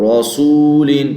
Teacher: رسول ان پہ آ کے یہ غلطی آتی ہے کہ را کو موٹا کرتے کرتے سین کو موٹا کر دیا جاتا ہے